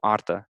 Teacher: it's just kind of like a slight, R rolling